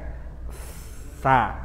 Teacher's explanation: sebelum huruf ini dibaca dia sudah keluar udara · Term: sifat hams